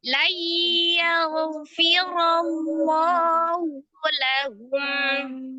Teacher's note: karena ro-nya berharokat fathah, maka ro-nya juga dibaca dengan tebal atau tafkhim. La-nya mad, otomatis ya di lafaz Allah, la-nya dibaca 2 harokat. · Karena sebelumnya ada huruf yang berharokat fathah, ya, ro di situ berbaris fathah, maka lafuz jalalahnya dibaca dengan tebal atau tafkhim tanpa merubah huruf lam menjadi bunyi huruf waw, tetap di makhraj lam ya. Kemudian karena ro-nya berharokat fathah, maka ro-nya juga dibaca dengan tebal atau tafkhim.